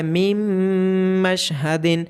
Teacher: یہاں پہ نون ساکن کی آواز میم میں مرج ہو گئی ہے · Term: ادغام